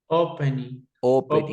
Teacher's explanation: La fuerza de voz está en O en pen.